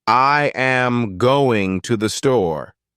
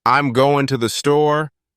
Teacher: In natural speech, the important words, going and store, are stressed, while the others, I am, to, and the, are softened and spoken quicker. If you emphasize every word equally, it sounds unnatural.